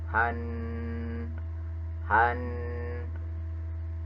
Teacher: tasjid jika Nun di tasjid maka itu termasuk kepada bacaan guna guna itu dibaca mendengung dan panjangnya dua harakat